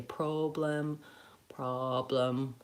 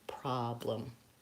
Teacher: They may say problem, problem, with too much rounding. You want a nice open ah vowel